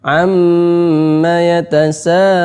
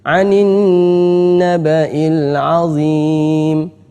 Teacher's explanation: maka hendaknya kita baca dengan gunnah atau berdengung 2 harokat. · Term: gunnah musyaddadah